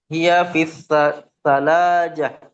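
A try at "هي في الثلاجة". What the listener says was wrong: Sallaja. Harokat akhirnya dibaca. Ada huruf jar di situ.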